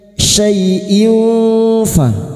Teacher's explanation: Syai'in fa kasroh tanwin atau kasrotain bertemu fa ikfa hakiki Kita samarkan bunyi kasrah tanwin dan mendengung selama 3 harokat